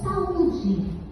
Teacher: saúde se trata de um hiato e o U está soberano na sua posição vogal. Então, ele é vogal nessa situação.